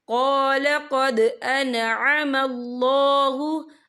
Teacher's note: यहाँ दाल साकिन है, तो यहाँ पर कलकला होगा